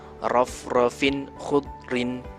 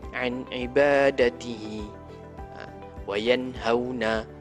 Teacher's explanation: Jelas bunyi nun sukun dan tanwin, tak ada dengung, tak ada apa, semua jelas, sebut satu-satu. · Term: izhar halqi